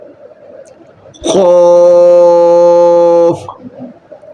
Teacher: زبان کی جڑ اور تالو کے نرم حصے سے زبان کی جڑ، جو زبان جس جگہ سے زبان شروع ہوتی ہے اس کو اوپر اٹھائیں گے۔ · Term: حروف مستعلیہ